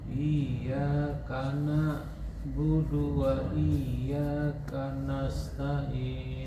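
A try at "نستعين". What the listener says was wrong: Sama di sini juga. Nasta'in. Shin apa sin? Sin. Nggak boleh kanasta'in.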